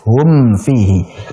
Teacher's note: mim sukun ketemu fa, idhar syafawi, sehingga kita membaca mimnya dengan jelas · makhraj antara mim sukun dan juga fa itu berdekatan. Makhrajnya berdekatan sehingga antakhtafi ini rawan menjadi ikhfa, menjadi samar.